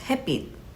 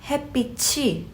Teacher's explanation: You see how that ch sound rolled over to the subject particle e?